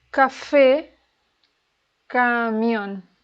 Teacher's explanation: Okay, about agudas, the stress is in the last syllable